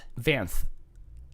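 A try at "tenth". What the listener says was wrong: You're exaggerating the TH. F.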